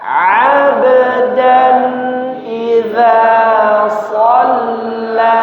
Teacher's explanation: Perhatikan huruf ba, qalqalah di tengah, tidak sampai suaranya terputus. Jangan ab, nah, bukan ab tapi ab, ya.